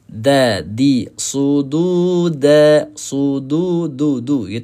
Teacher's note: Hujung lidah bertemu dengan pangkal gusi atas. Maksudnya pangkal gigi kacip atas lah. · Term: makhraj huruf dal